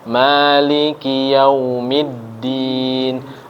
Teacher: diperhatikan di mimnya ya mimnya panjang dua ketukan 2 harokat lalu huruf Dal juga ada tasydid itu berarti ditekan dan ditahan